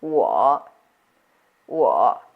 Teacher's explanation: Notice here it's a dip going down and up. So, it's the third tone.